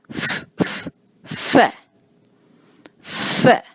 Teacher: تھوڑی سی سانس کی آواز یعنی پھونک کی آواز شامل ہوتی ہے